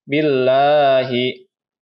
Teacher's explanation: Billahi, di mana pada lafaz Allah ini dibaca tipis karena sebelum lafaz Allah ini berharokah kasroh. Ya, jadi billahi dibaca tarkik atau tipis.